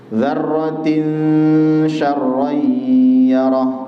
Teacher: Dzarratin syarran yarah ada ikhfa, kemudian rayyarah ada idgham bi gunnah. Dzarratin ikhfa dibaca samar dan ada dengungan